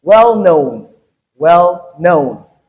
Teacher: So in this case the stress is on the second word in the compound. So we have well unstressed and then known stressed